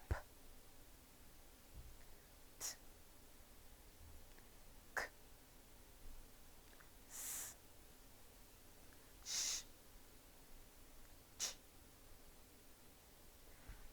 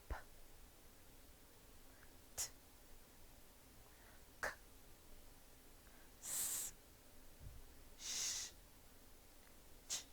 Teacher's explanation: Your throat does not vibrate because your voice is off. That is why we call it unvoiced or voiceless sounds.